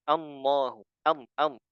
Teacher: dalam membaca lafzul jalalah ada yang membaca Allahu am am ya jadi lamnya itu gunah ya atau ada ada suara gunahnya suara hidungnya dan ini kurang tepat